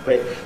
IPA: i